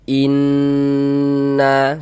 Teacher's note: Maka kita gunnahkan. Jadi bagian innya itu, suaranya itu kita tahan, kita panjangkan sejenak. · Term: gunnah musyaddadah